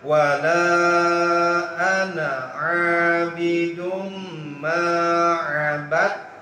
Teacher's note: idgham mutaqaribain. Jadi taknya dimasukkan ke dal. Jadi abadtum.